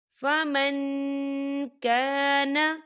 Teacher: ایاما معدودات، فمن کان، دیکھیے فمن، یہاں نون ساکن ہے اور نون ساکن کے بعد کاف آ رہا ہے، اور کاف جو ہے اکفا کا ورڈ ہے، تو یہاں پر اکفا ہوگا، ہم نون ساکن کی آواز کو ناک میں چھپائیں گے